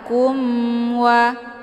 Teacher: tidak perlu ditahan kumwa ya karena hukum bacaan izhar syafawi jelas tiada berdengung